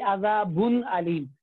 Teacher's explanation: اظہار نون ساکن بغیر غنہ کے پڑھنا